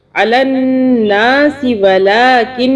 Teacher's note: علی الناس ولکن، یہاں پہ پھر اسی طرح نون کے اوپر تشدید ہے، 2 سیکنڈ کے لیے غنہ کریں گے